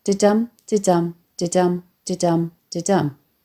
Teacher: metre, or rhythmical pattern, i.e. a 10-syllable line in iambic pentameter